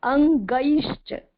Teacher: ग के ऊपर एड़ी की मात्रा है, डबल मात्रा है, अ और ई मिक्स करके बोलेंगे